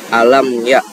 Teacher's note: Di sini mim sukun bertemu dengan huruf ya, maka dibaca izhar juga atau diperjelaskan